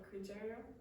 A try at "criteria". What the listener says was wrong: criteria. Again, because the tongue is in a weird position for an English native speaker, it becomes a little bit harder for us to hear. It almost sounds like you're not able to pronounce an English R, and you say criteria. It's cry. So like criteria.